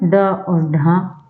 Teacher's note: उत्क्षिप्त जिनके उच्चारण जीव ऊपर उठकर झटके से नीचे आए उन्हें उत्क्षिप्त बोला जाता है, या इनको द्विगुण भी कहते हैं।